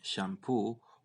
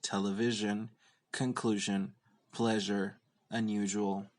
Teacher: the palatal alveolar fricative can be voiceless as in shampoo or sharp or voiced